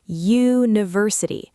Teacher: The first sound is Y, like the word you. That's a consonant sound, not a vowel sound.